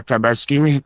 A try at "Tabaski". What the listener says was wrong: Alors, chers frères, la deuxième remarque qu'on fait, c'est que Alassane Ouattara n'arrive pas à prononcer Tabaski. Non, il dit Tabaskini. Alassane Ouattara dit Tabaskini, comme si c'était IA qui parlait.